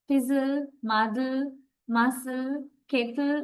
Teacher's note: In these words, the last vowel sound is not usually pronounced. So the consonant L has a syllabic function.